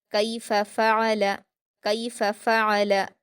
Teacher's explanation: काफ पर यालीन है, इसको हम मारूफ आवाज़ के साथ जल्दी पढ़ेंगे। फ़ा पर हरकतें जल्दी पढ़ेंगे।